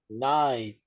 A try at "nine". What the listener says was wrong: Muy bien. Podemos notar que la última letra de este número es la N, no la E.